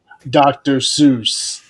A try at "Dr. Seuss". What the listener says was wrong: Dr. Zeus. In the main one, he's not called Dr. Seuss, he's called Dr. Zeus with a Z. Or Zeus, yeah.